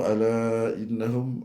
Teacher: Mad munfasil mad jaiz ni. Ala empat harakat.